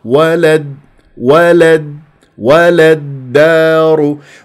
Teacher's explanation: انتقلت الى الى الدال لانه راح تكون هذه اللام شمسيه ولد ولد ولغيت كانه هذه اللامة الموجوده بالوسط ولد ولد ولد